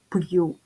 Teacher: якщо стоїть апостроф то буква ю після апострофа буде позначати два звуки й у додаємо сюди приголосний звук й а попередній приголосний буде твердим компютер